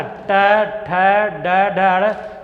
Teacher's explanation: जीभ का जो आगे वाला हिस्सा है मुड़ के जाके तालु में टकराता है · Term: मूर्धन्य व्यंजन